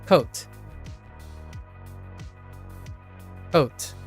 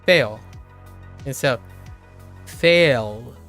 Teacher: lots of northern Americans, they tend to remove diphthongs into single things